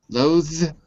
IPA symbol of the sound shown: ð